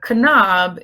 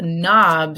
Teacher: the K is silent and we hear the N